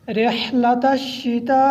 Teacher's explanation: اس کے اوپر ماد متصل ہے اور اس کو 4 الف کے برابر لمبا کرنا ہے۔